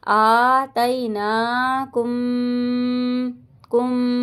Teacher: میم ساکن کے بعد با آ رہا ہے تو گنہ کریں گے